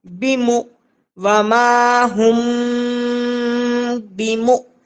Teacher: با زیر بی میم حمزہ پیش مو بیمو وما ہم بیمو، حمزہ ساکینہ کے پڑھنے میں جھٹکا ہوتا ہے